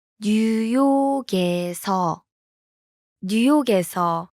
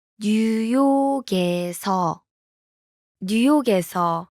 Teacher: The last consonant in 뉴욕, blends with the vowel in. 에서.